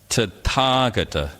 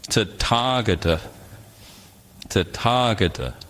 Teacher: It's just the T with a little puff of air. We call this an aspiration.